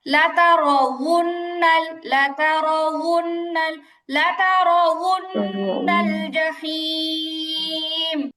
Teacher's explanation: লাতারাউন্না বললে ওয়াওটা হামজা হয়ে গেল, হামজা হবে না।